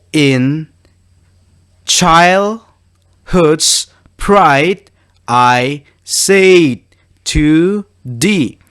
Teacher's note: It is iambic because the syllables, it starts with the sound with low accent followed by high accent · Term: iambic tetrameter